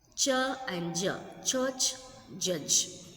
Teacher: Affricate. Starts as plosives, releases as a fricative.